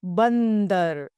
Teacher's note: अनुस्वार यानी बिंदी, इसका उच्चारण नाक से होता है